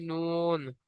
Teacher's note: জীবের আগা এবং তার বরাবর উপরে তালুর সাথে লাগে উচ্চারিত হয় নুন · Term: 9 নম্বর মাখরাজ